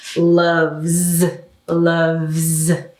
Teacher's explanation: and that's voiced because there's a movement there so that means when we add the s it's not a s sound it's a z sound